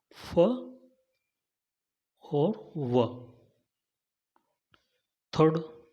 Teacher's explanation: In this, the upper front teeth and lower lip are used to pronounce the sounds. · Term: Labiodental